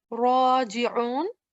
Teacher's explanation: ra has a fatha, it will be pronounced with a thick sound